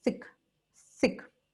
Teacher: щоб його вимовити треба Прокласти язик між двома щелепами між верхньою і нижньою прямо між зубами просунути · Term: міжзубний звук